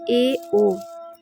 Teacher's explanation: जिन स्वरों के उच्चारण में मुख संवृत स्वर से थोड़ा अधिक खुला हो रहता है अर्ध संवृत स्वर कहलाता है।